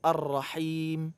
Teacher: hanya dari tengah kerongkongan bukan dari pangkal